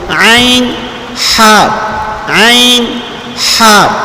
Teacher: مخرج نمبر 3 یہ وسط حلق ہے، گلے کا درمیانی حصہ، اس سے 2 حرف عین اور ہا ادا ہوتے ہیں۔